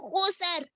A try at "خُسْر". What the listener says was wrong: खुस्र। हाँ, सीन देखो साकिन है, ये जज़म का निशान है, जबर नहीं पढ़ना, खुस्र क्या है?